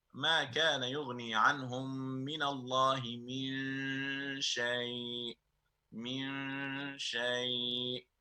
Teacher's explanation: There is a two haraka emphasis here because of ikhfa. And ikhfa really is that we, if you like, we overlook, we overstretch from meme to sheen.